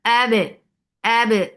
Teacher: So abe, and ba has very clear qalqala. First, you are giving shidda on ba. You are blocking the sound of ba. The makhraj will cut off the sound. And then there is qalqala.